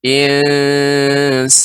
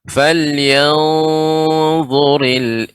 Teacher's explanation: Dan ini termasuk huruf isti'la sehingga dibaca falyanzuril adapun insanu ini dibaca datar. Insanu. Adapun yanzur ini tinggi. Artinya naiknya suara ke langit-langit.